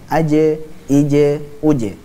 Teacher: huruf Jim pula adalah huruf yang memiliki sifat Qalqalah jadi memantul ketika Sukun